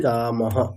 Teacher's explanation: বিসর্গের জায়গায় হ বসালাম আর হ এর পরে অকার নিলাম